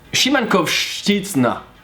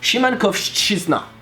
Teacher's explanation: those two sounds are so close and at the same time not that close because you have a sh and the ch. And the first one is almost silent, it's like sh.